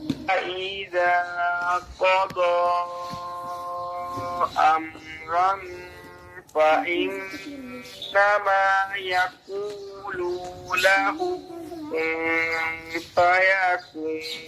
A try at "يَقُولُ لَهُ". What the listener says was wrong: अब ने यकूलू को लंबा कर दिया, यकूलू लहू।